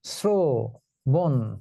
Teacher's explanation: যেমন এই যে শ্রবণ, এটা কিন্তু তালব্য স উচ্চারিত হবে না, এটা উচ্চারিত হবে দন্ত স এর মতো, শ্রবণ। অর্থাৎ র ফলা থাকলে তালব্য সটা দন্ত স এর মতো উচ্চারিত হয়